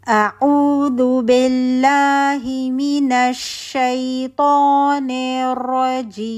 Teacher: मीम के हंठ के लिए हंठ बंद होगा और वन काउंट नशल गुना होगा